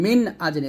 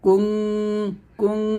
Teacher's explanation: নুন সাকিনের উচ্চারণটা স্পষ্ট হবে না বা বোঝা যাবে না, অস্পষ্ট থাকবে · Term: ইকফা গুণা